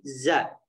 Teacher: Nah, di sini kekeliruan yang sering sekali terjadi adalah di huruf zai ya, atau di huruf za. Za ini memiliki makhraj ujung lidahnya turun ke gigi seri bawah gitu ya. Jadi za gitu ya. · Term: sofir